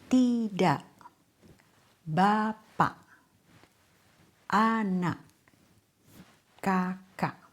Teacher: Many native speakers don't fully pronounce the final K. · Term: glottal stop